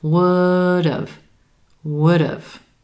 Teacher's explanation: With emphasis on that as in would, and that second syllable is going to sound like dove, with the D consonant sound at the beginning of that syllable